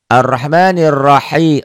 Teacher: Ar-Rahma, Ar-Rahma-nya mad asli, ninya kosar, nir alif lam samsiah. Nir ro-nya dibaca tebel.